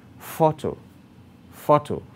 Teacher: its emphasis lies on the first syllable thoughts photo photo so the primary stress is on four the